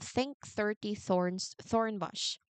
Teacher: These words require the voiceless th sound. Focus on the clean aim release of breath.